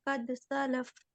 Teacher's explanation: قد قوف کو موٹا رکھیں گے، دال کے اوپر کلکلا